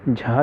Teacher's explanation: झा जो है ये सघोष महाप्राण व्यंजन है।